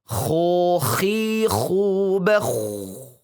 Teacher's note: Maka itu membuat dia sulit untuk menebalkannya. Maka lafadzkan dengan sedikit mencucu dan ngorok ya. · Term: huruf kho